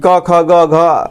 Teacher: इनका उच्चारण स्थान कंठ के स्पर्श से होता है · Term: क वर्ग